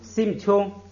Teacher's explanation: 后边的▁u▁是闭音节，前边这个▁a▁呢要变成一 ，这个就读成▁sim▁tune，▁哎，就变成▁sim▁tune▁了。读▁sim▁tune▁呢绝对没有问题，而且是读书音呢一般它也不变，所以呢你就按照原来读音也可以。哎，这个▁sim▁tune▁呢▁sim▁是心，▁sim▁是我们的这个心，这个tune呢是少小，这个小